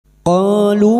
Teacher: Qalu fathah diikuti alif 2 harakat mad tabi'i